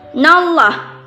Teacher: Nah, di sini takim, bukan tarqiq, karena sebelum lam jalalah terdapat baris fathah.